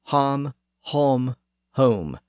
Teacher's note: the sound was raised even further in the back of the mouth, from aw to o